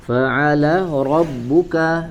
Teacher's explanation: huruf Ain di wasatul halq ya di bagian tengah tenggorokan